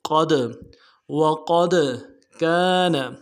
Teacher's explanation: دال کے اوپر جب جزم ہو، ساکن ہو، سکون بھی کہتے ہیں، ساکن بھی کہتے ہیں، جزم بھی کہتے ہیں، تو قلقلہ کریں گے، قد وقد کان، کاف کے ساتھ الف مدہ ہے، ایک الف دال میں کھینچیں گے، کا نون کو نون سے ادا کریں گے۔